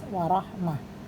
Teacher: Rabbikum, wa mim sukun bertemu wa tidak mendengung dibaca jelas, warahmah tak marbutoh, maka ketika diwakafkan atau diberhentikan berubah menjadi suara ha